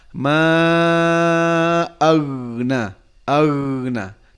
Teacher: Pas kita membaca huruf gha, ingat huruf isti'la mufakham, tebal. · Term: tebal dan mengalir